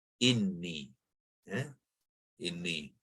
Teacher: Dalam penulisan sepatutnya ya mad, dia ya mutakalim sekarang sudah menjadi ya mad, ya, memanjangkan huruf nun yang berbaris kasrah